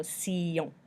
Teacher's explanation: the T is kind of like an S sound, the I is an E noise like usual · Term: sion sound